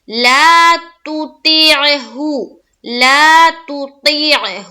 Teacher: تا میں بھی اور ہا میں بھی دونوں جگہ معروف کا خیال رکھیں گے اور مجہول نہ ہونے پائے ، تو ہو نہیں بولیں گے، تو ہو غلط، مجہول ہو